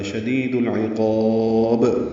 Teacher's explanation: شدید العقاب میں دی یا مدہ ہے، دل میں اظہار قمری ہے، عین کی وجہ سے، عین وسط حلق سے ادا ہوگا، قاف پر پڑھیں گے، قاف کو لمبا کریں گے اور با ساکن پہ قلقلہ ہوگا، شدید العقاب۔